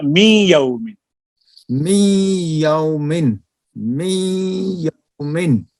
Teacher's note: می یومن میں نون بالکل یا نہیں ہوتا، یعنی مکمل یا نہیں بنتا نون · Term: ناقص